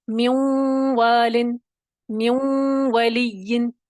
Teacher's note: نون کا واؤ میں نون کی صفت غنہ باقی رہے گی